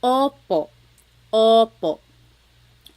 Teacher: Sometimes I think of it like having a ball in your mouth. Your tongue gets kind of pushed back and down a little bit and the inside of your mouth is open and wide. So O like OPO. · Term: letter O